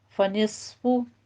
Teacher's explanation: सौत को पुर पढ़ना है, इस पर सीटी की आवाज़ आनी चाहिए